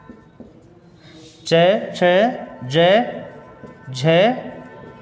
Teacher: ये जो वर्ण हैं वो तालव्य वर्ण कहलाते हैं और इनका उच्चारण स्थान है तालु